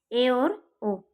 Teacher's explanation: अब अर्धसंवृत स्वर, ठीक है, अर्धसंवृत स्वर भी संवृत स्वर की तुलना में जो हमारी जिह्वा की जो ऊंचाई होती है वह कम होती है, अर्थात ज़्यादा मुंह बंद नहीं होता है, थोड़ा सा मुंह खुला होता है।